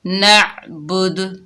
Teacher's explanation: وقف کی حالت میں دال کا پیش ختم ہو جائے گا، دال ساکن ہو جائے گی اور یہاں پر ہم کلکلا کریں گے، دال کی آواز پلٹ کر واپس آئے گی۔